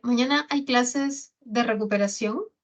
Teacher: subiendo un poquito así, con un tono agudo